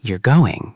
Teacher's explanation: with a falling intonation, it's a statement